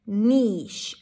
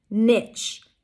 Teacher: The second one is nitch, an N sound, E as in sit, and ch, t, sh, together, ch, niche, nitch. The difference is in the vowel in the middle, E versus I, and the consonant at the end, sh, ch